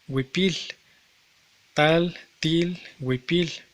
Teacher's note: cuando se localiza al final de una palabra, suele desvocalizarse, se convierte en una fricativa lateral, como en tal, til y en huipil, huipil, tal, til, huipil.